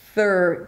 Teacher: it's a soft TH and then you pull it for an R and push your lips forward.